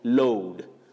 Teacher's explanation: It has that slight vowel glide